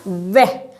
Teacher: ऐसा व्यंजन जो दंतोष्ठ कहलाता है, दंत और ओष्ठ दोनों से उच्चारण होता है